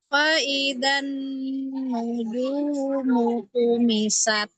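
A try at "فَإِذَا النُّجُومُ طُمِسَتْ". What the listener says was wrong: Jimnya syiddah, jaharkan lagi. Nuju. Kuatkan lagi. Iya, karena jim punya sifat syiddah jahar ya. Tumisat. Langsung. Tumisat.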